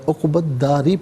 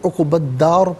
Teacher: وقف کی صورت میں را ساکن کو پر کر کے پڑھا جائے گا